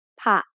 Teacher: is a low tone because it has a high-class initial consonant with a short vowel to make a dead ending. Then what happens is the high-class consonant gives its tone quality to the letter that follows it.